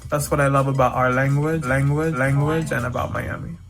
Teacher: in Miami English you'll hear that dark l in places where you wouldn't hear it in other varieties